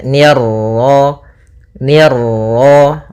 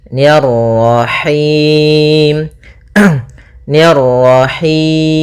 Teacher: ni tipis ketemu ra yang ra tafkhim, ra tebal, maka nirra.